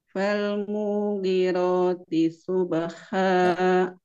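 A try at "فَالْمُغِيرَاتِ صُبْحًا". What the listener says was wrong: Mu-nya mimnya dipendekin. Falmughi. Nah, yang dipanjangin huruf ghainnya Bu, ghain.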